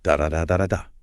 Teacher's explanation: Okay, so what does that actually sound like? It means every single syllable gets roughly the exact same amount of time, emphasis, and physical jaw movement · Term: syllable-timed language